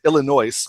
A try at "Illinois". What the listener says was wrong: No, you do not pronounce the S.